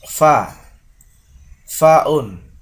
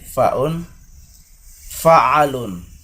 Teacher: konsonan yang terjadi pada alat artikulasi dengan cara bibir bawah merapat pada gigi atas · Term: konsonan labiodental